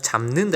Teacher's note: 지금 비읍이 미음으로 바뀌는 거잖아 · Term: 비음화